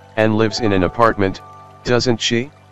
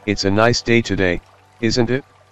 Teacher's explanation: A tag question may be spoken A. with a rising intonation if the speaker is truly seeking to ascertain that his/her information, idea, or belief is correct